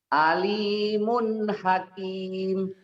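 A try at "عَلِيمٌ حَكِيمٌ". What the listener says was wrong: Sentak Pak. Mana Pak idharnya Pak? Ini ada matobi itu Pak. Nih kasroh dengan ya mati. Ini juga matobi kasroh dengan ya mati.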